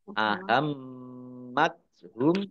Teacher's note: mimnya dibaca gunnah atau mendengung, ditahan 2 harokat